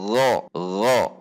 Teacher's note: gho gho dengan menegangkan pangkal lidah karena atributnya adalah isti'la gho. Jika ko didorong ko gho ko kho gho.